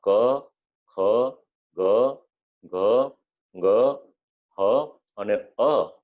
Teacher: જે કક્કો ભણ્યા હોય એમાં ક, ખ, ગ, ઘ, ગ, હ અને અ આટલા અક્ષર જ્યારે આપણે બોલીએ છીએ ત્યારે આપણા હોઠ પણ ભેગા નથી થતા, આપણા તાળવે એ પણ નથી ભેગું થતું, આપણા દાંતની સાથે પણ સ્પર્શ નથી કરવામાં આવતો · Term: કંઠ